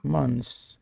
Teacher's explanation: Start the word months at a slightly higher pitch, then let your voice drop downward as the word ends. Imagine your voice sliding down a hill on the word months. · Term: falling intonation